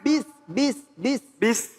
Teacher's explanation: Nah, sinnya kudu berdesis ya, hames ya.